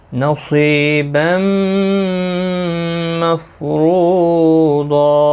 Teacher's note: دو زبر کو بدل کر ایک زبر کے ساتھ وقف کریں گے. الف مدہ بنتا ہے ایک الف کی مقدار کے برابر کھینچ کر وقف کریں گے. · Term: وقف بالابدال